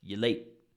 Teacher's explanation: And then explode on late, because late is the stress.